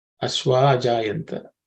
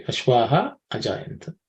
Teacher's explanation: The visarga is also dropped because of sandhi.